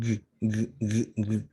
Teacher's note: g has voice because it makes a vibration